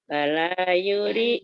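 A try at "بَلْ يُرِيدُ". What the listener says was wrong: Bal. Sukun. Bal.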